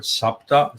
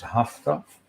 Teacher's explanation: the changeover from s to h this you find in uh in iranian for example in sanskrit we have the word sapta seven in